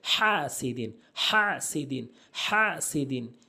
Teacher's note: হা হলকের মাঝখান থেকে বলতে হবে এবং এক আলিফ টেনে পড়তে হবে